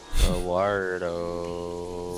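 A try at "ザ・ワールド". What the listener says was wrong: Zawardo. You have to roll the R. Can you not roll your R's?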